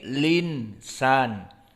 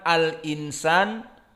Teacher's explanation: Hamzah hilang harokatnya pindah ke lam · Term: nakal